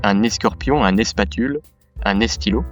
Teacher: Le ske, spe et ste sont précédés d'un e